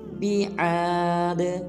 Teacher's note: آخر میں دال کو قلقلہ کریں گے یعنی کہ ہلائیں گے